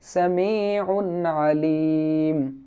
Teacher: তো আইন হচ্ছে ইজহারের হরফ, তো ইজহারের হরফ হওয়ার কারণে এখানে সামিউন আলিম এটা বলার সময় উন উন বলে আমরা গুন্না করব না, এখানে আমরা স্পষ্ট করে যাব